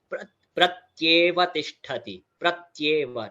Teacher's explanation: संयुक्त अक्षर, प्रत्येव तिष्ठति, नॉट प्रत्येव तिष्ठति, डायरेक्टली नहीं बोलना है, त का एडिशनल वहां पर जो है अक्षर साउंड वहां पर जुड़ेगा ध्रुतम संधि के रूप में